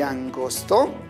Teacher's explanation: sobre los dientes es decir colocamos en esta parte en cambio cuando pronuncia la palabra angosto en la punta de la lengua tiene contacto con la parte posterior